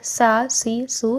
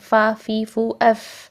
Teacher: یہ دیکھیں یہاں پہ بن گئے یہ والے حروف جو ہیں یہ بریتھ بیسڈ بن گئے، یعنی سانس جاری رہے گا، اس کا مطلب ہے کہ ان کو ادا کرتے ہوئے سانس والی ساؤنڈ آنی چاہیے، سانس کے ساتھ ہی ساؤنڈ آنی چاہیے، ٹھیک ہے۔ جیسے کہ سین کو دیکھ لیں آپ، سین کو جب ہم ادا کریں سا سی سو، سانس والی ساؤنڈ آ رہی ہے ساتھ میں ہی، ٹھیک ہے۔